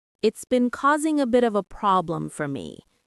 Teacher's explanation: The a bit of a often runs together very quickly, almost like a bit of a.